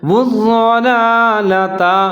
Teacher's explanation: جیسے اولئک الذین اشتروا الضلالۃ، اب یہاں ضاد کے اوپر پھر شد ہے تو اس کو واو کے ساتھ ملائیں گے اور اس کو مضبوطی کے ساتھ پڑھیں گے. والضلالۃ، یہاں پہلا جو لام ہے اس کے اوپر کھڑا زبر ہے، اس کو 1 الف کے برابر لمبا پڑھیں گے